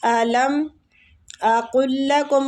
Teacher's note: क़ाफ को लाम के साथ मिलाएंगे, तशदीद वाली लाम के साथ